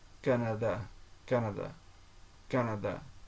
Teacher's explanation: where stress is equal on all three